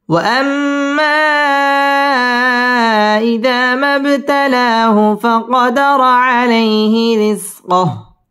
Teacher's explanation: ওয়াও ঠোঁট গোল করে উচ্চারণ করতে হবে , ওয়াম ওয়াজিব গুন্না, মা মধ্যে মুনফাসিল তিন আলিফ টেনে পড়তে